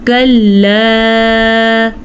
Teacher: کلا کے اوپر جو مد ہے یہ 3 الف کے برابر ہے۔ آسان الفاظ میں اس کو سمجھنے کے لیے آپ 3 سیکنڈ کے لیے اس کو لمبا کیا کریں، کیسے کلا، بس اتنا جتنا ہم 3 گن جائیں۔